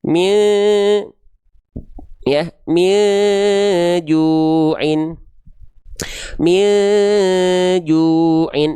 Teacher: bunyi n-nya tak lagi kita baca n tapi dia dibaca samar bersiap-siap melafalkan jimnya.